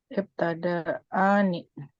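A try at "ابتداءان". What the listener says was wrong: Ibtada ibtidaani. Tetap hamzah. Ibtida'ani. Jelas ya kalau hamzah asli maka hukumnya tabqa.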